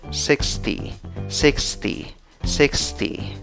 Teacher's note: 60 en inglés se escribe con 5 letras y se pronuncia con 6 sonidos. Divides la palabra en 2 sílabas, la fuerza de voz en la primera sílaba.